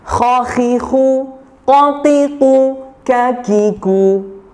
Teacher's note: Pangkal lidah ya, atau lidah bagian belakang, ada qaf dan kaf.